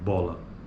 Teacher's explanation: esse B ele é bilabial então o lugar de articulação se chama bilabial